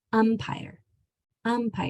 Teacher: it's hard when you're speaking to know if that is an M or an N that's coming before the P because your mouth closes to make the P sound